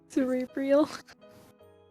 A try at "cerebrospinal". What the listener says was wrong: Cerebrospinal. Look at the spelling. Look at the spelling. B-R-O. Not B-R-I-L. You see how it's spelled right here? Cerebrospinal.